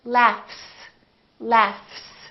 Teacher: the word laughs this gh is actually an F sound right there's no vibration in my vocal cords so the f is actually a voiceless sound